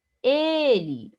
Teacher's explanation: Observe que eu tenho que depois, também tenho a paroxítona. Ele, o e é a sílaba mais forte, também paroxítona